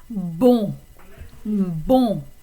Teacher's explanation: So the O-N combination is what we call a nasal vowel in French.